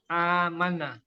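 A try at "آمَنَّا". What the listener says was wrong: Nanya panjang Bapak. Coba ulangi lagi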